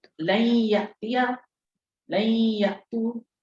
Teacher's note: یہ دیکھیں نون کے بعد، نون ساکن کے بعد یا آ گئی تو لن پڑھا ہم نے، روک لیا آواز کو، تھوڑا سا غنہ کر دیا